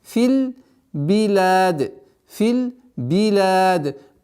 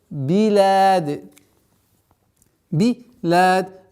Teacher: После сукуна нужно максимально четко произносить огласовку кясра с буквой б.